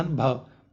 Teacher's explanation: हिंदी की स्पर्श घोष महाप्राण ओष्ठ्य व्यंजन